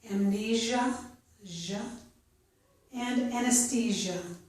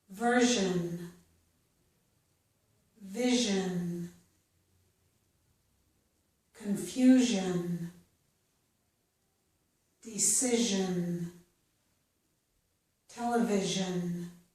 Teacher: The zh sound is the voiced sound. So we use our vocal cords to make this sound. Okay? I'm finished with the sh or voiceless sound for now. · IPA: / ʒ /